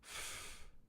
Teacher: the lower lip going to the cutting edge of the upper teeth for the sound F, the unvoiced sound.